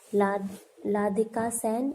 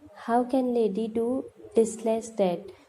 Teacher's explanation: unable to speak the R sound, which is substituted with L.